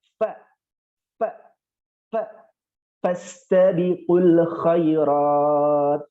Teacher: Fa itu gigi serinya ditempelkan dengan bibir bawah, bibir bagian bawah.